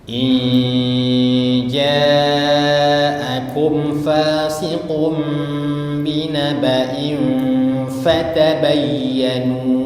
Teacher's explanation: inja itu tidak langsung inja'akum, tapi agak lama-lama sedikit dan nunnya itu disamar-samarkan. Jadi nunnya disamar-samarkan, namanya ikhfa, ya.